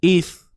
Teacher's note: Okay, ni huruf Hamzah baris bawah ni. Kemudian matikan sa, keluarkan sedikit hujung lidah.